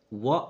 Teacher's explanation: व वर्ण का उच्चारण स्थान है, यानी व अगर हम बोलते हैं तो उच्चारण करते समय ऊपर के दांत और नीचे के होठ आपस में स्पर्श कर रहे हैं। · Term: दंतोष्ठ